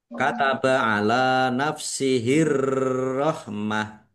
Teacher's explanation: Arrahmah alif lam syamsiyah karena tidak dibaca langsung masuk ke huruf berikutnya yaitu ro ditandai rnya ada tasdidnya rnya dibaca dobel. Kemudian ta marbutah karena waqaf dibaca ha sukun arrahmah dan dibaca pendek karena tidak ada tanda panjangnya. · Lam fathah berdiri mat tobi'i panjang 2 harokat. Ar-Rahmah alif lam samsiah karena tidak dibaca langsung masuk ke huruf berikutnya yaitu ro, ditandai roknya ada tasdidnya.